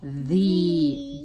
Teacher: It's voiced. You use your vocal cords. You'll feel it. It'll vibrate in your throat.